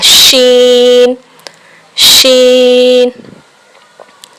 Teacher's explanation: शीन की अदायगी ज़बान के दरमियान और ऊपर के तालू के दरमियान से शीन। यहाँ हम SH की आवाज़ को मिलाते हैं, जिस तरह अदा की जाती है उसी तरह शीन शीन।